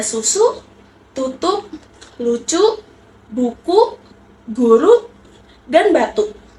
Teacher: mulut membulat dan menyempit. Lidah mendekati dengan langit-langit bagian belakang.